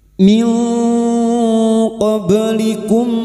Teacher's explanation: Kita samarkan bunyi nun sukun dan mendengung selama tiga harakat. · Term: ikfa hakiki